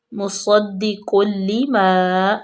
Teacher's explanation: صاد پر پڑھیں گے، قاف بھی پر